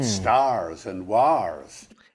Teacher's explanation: Did you notice that he's pronouncing the r because he was rhotic? The dropping of the r in between vowels wasn't a thing in the Middle Ages.